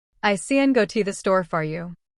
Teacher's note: Native speakers stress the content words. Go. Store. Everything else is weak.